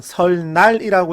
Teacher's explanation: 유음이 아닌 것이 유음을 만나서 유음처럼 되는 것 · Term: 유음화